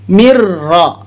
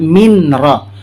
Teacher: Mim di bawah mi dimatikan nun, min, bunyi sebenarnya min ra. Tapi karena ra ini bertasjid, maka bunyi tanda nun ini hilang, dilebur masuk ke huruf ra